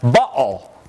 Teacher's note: this is a stop that's produced at the vocal folds by closing the vocal cords at the glottis and then opening them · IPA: ʔ]